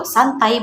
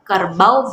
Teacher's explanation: dua vokal yang diucapkan dalam satu hembusan nafas tetapi dengan kualitas bunyi yang berubah dari awal hingga akhir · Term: diftong